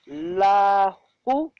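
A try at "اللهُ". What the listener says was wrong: Allahu. Here we will pronounce Alif. it's in the beginning.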